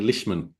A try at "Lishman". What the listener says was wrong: Yes, Lishman. You don't need the leash. Yeah, Lishman.